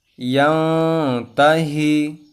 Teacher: تو اس طرح پڑھیں گے کلا لئلم، یعنی ہم نے تو ملا کر پڑھا لیکن بغیر گنہ کے پڑھا، تو یہاں پر یہ قاعدہ ہوگا۔ اور ینتہی، یہاں نون ساکن کے بعد تا آیا ہے تو یہاں پر تو اخفا ہوگا